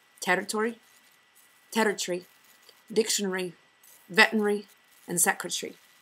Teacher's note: Scottish speakers take words ending in T-O-R-Y, T-A-R-Y, B-U-R-Y and contract them from 2 syllables to only 1. For example, territory, territory, dictionary, veterinary, and secretary.